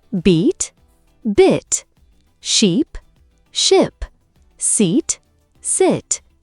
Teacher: Your mouth is wider, your lips stretch. The short I sound in sit is a little more relaxed.